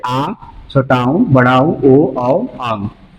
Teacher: इन स्वरों का उच्चारण हम क्या करते हैं? मुख के पिछले भाग से करते हैं। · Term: पश्च स्वर